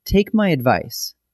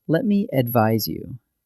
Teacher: Advice with a C, that's a soft S sound, is a noun, a thing you give. Advise with an S, that's a Z sound, is the verb